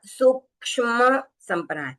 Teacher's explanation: और वैसे ही ये जो क्ष का उच्चारण करते हैं उस समय पे काफी लोगों की मिस्टेक होती है, ये क्ष यानी क और श मिलके बना है, तो क का उच्चारण भी थोड़ा सुनाई देना चाहिए